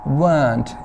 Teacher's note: weren't, इसमें र नहीं बोला जाता है. ओके, ब्रिटिश इंग्लिश में र वाउल से पहले नहीं बोला जाता